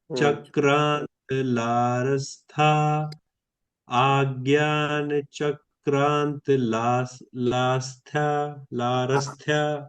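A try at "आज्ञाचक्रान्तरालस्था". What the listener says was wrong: वहां पर रा जो है वो दीर्घ है तो उसको अगर आप बोलेंगे तो आगे कहा जाएगा जैसे आज्ञा चक्रांतरालस्ता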